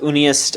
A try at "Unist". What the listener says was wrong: It's Unist. There's no E. comes from Unio, but now it's...